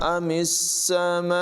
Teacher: میم کو سین سے ملائیں گے اور سین کی آواز میں سٹی پیدا کریں گے۔ یہاں پر مد متصل ہے، اسے بھی 2-3 سیکنڈ تک لمبا کر کے پڑھیں گے۔